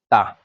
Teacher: त वर्ग दांत का जो ऊपरी दांतों के निकट से है ता इसको हम दंत बोलते हैं।